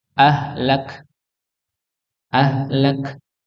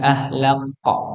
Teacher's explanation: Ya, ini keluarnya bukan bukan di ujung bibir nggih, tapi keluarnya di tempatnya. Kaf, kaf itu tempatnya di pangkal lidah. Nggih, dekat dengan qaf. Cuma bedanya kaf ini maju begitu nggih.